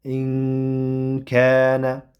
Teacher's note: Mana bu demak hamza kasra bilan bo'ldi va undan keyin nun harakatsiz nun bo'lyapti. Mana bu nunni o'zidan keyingi kafni ichiga ixfa qilib yashiramiz va yana ozroq ushlab turiladi